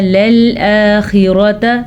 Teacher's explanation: لَلْآخِرَةَ خا پر پڑھنا ہے کیونکہ خا حروف مستعلیہ میں سے ہے